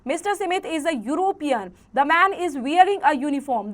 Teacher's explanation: Though the words European and uniform start with e and u which are vowels, they sound like a consonant u.